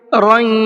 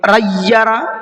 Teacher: تھوڑی دیر تنوین کی آواز کو ناک میں چھپائیں گے